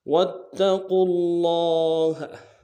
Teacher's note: واو کو تا کے سامنے لانا ہے، تا کے اوپر تشدید زور دیں گے